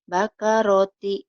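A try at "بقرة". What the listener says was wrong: bakaroti ro kan ini huruf Jawa ya, huruf O maksudnya, huruf bako ro, ini huruf O semua, bukan bakarati, bakoroti.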